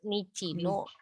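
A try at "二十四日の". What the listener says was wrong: Oh, enggak, kalau udah Nijuyoka berarti Nichinya dihapus. Oh, enggak pakai.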